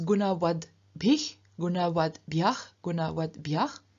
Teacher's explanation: the T at the end of the stem becomes voiced too, so turns into a D.